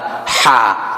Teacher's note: Terus bismillahi, hanya ha besar ya, ha yang makhrajnya dipangkal atau di pangkal tenggorokan. Nanti kalau yang ha yang kecil itu makhrajnya di tengah tenggorokan.